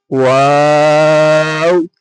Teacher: ওয়াও দুই ঠোঁট না মিলিয়ে মাঝখান হতে উচ্চারিত হয় ওয়াও